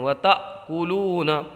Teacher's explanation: یہ حمزہ ساکنہ ہے تو اس کو جھٹکا دے کر کے پڑھیں گے